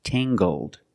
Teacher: using the nasal sound and the hard g, tangled.